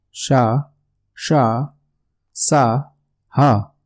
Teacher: जिन व्यंजनों का उच्चारण करते समय हवा मुख के विभिन्न भागों से रगड़ खाती हुई बाहर निकले उन्हें ऊष्म या संघर्षी व्यंजन कहते हैं। तो इसके दो नाम हैं, एक तो ऊष्म है और दूसरा संघर्षी। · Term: ऊष्म व्यंजन